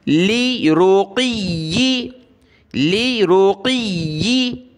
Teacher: دیکھیں یہاں قاف اور یا دونوں پر زیر ہے، لام زیر لی، را پیش رو، لی رو، قاف یا زیر قی، یا زیر ی، قی. قاف کو موٹا کر کے یا کے ساتھ ملانا، یا کو سخت کریں گے تشدید کی وجہ سے